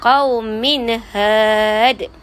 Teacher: Huruf izhar halqi. Cara bacaan dia jelas, tak ada dengung